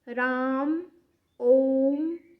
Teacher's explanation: प्लुत स्वर के अंतर्गत राम, ओम, जिसको हम खींच के बोलते हैं, यहाँ पर 3 या 3 से अधिक मात्राएं आती हैं।